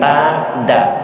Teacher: Karena antara dal dan ta itu satu keluarga, satu makhraj, maka disebut idgham mutajannis. · Bahkan dalam ikhfa saja, dal dan ta itu to, dal ta to itu termasuk ikhfa aqrab. Karena satu rumpun, satu makhraj. Makhrajnya di ujung lidah, ta da. Maka ibu membaca da itu mirip dengan membaca ta.